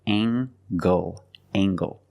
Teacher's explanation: use the nasal plus the hard G